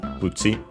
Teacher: in this case actually in Japanese accent on the first syllable so be careful.